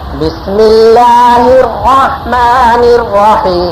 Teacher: الرحیم میں بھی را کو پوری طرح پر تشدید ادا کرنی ہے اور پر بھی کرنا ہے، لیکن را میں تکرار نہ پیدا ہو اور منہ بھی نہ ہونٹ بھی نہ گول ہو، اور حیم میں ناک میں آواز نہ جائے، اور آخر میں نون میم نہ ہلے.